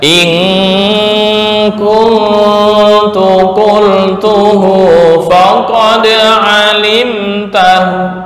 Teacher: raum, artinya membaca dhammah di hu sepertiga harokat